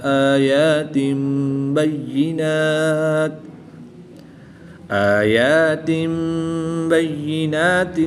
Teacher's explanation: دو زیر کی تنوین کے بعد حرف با ہے تو دو زیر کی تنوین کو میم سے بدل کر غنہ زمانی کر کے پڑھیں گے